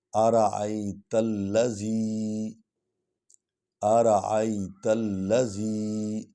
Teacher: آرائی، آرائی، آرائی بھی نہیں پڑھیں گے، آرائیت الذی، آرائیت الذی، تا کو لام کے ساتھ ملا رہے ہیں کیونکہ لام پر شد ہے اور پیچھے جو الف ہے وہ خالی ہے، اس کو چھوڑ دیں گے اور لام کو پڑھیں گے۔ لام جو ہے یہ 2 بار پڑھی جائے گی، اپنی زبر کے ساتھ بھی پڑھی جائے گی اور تا کے ساتھ بھی پیچھے ملا کر پڑھی جائے گی۔